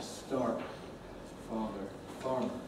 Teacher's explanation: Many accents, including American English, of course, do have an R consonant and say start, father, farmer.